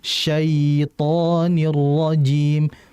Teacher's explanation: Maksudnya melembutkan aliran. Jadi huruf ya itu kan huruf yang keluar dari lidah. Dan lidahnya bagian tengah. Sehingga ketika lidah itu naik, maka alirkanlah dengan lembut. Tidak dengan menghentak. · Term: lin